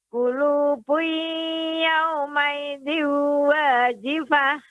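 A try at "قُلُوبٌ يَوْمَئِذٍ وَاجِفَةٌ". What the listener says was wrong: Yaumaidin, agak lebih diperpanjang lagi, Ibu.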